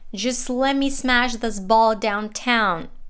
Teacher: speaks with pretty flat intonation